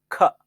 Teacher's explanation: ಖ ಅನ್ನುವಾಗ ನಿಮ್ಮ ಬಾಯಿಂದ ಏರ್ ಫೋರ್ಸ್ ಆಗಿ ಬರಬೇಕು, ಅದು ಮಹಾಪ್ರಾಣ, ಪ್ರಾಣವಾಯು.